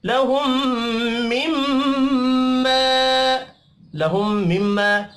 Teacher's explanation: دو میم مشدد ہیں، دونوں پر غنہ کریں گے